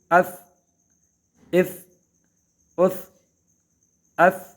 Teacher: اف قلقلہ میں سے نہیں ہے، آواز کو روکنا ہے